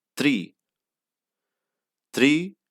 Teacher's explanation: is not performed like in english like any word real work it is basically a flip like a rolling r but we don't actually roll it just flap once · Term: small r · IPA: ˈtɾi